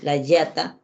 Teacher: cuando el niño dice la yata cendo su lengua no vibra